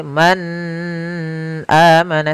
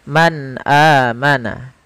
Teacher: suara nunnya harus jelas tidak boleh ditahan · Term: izhar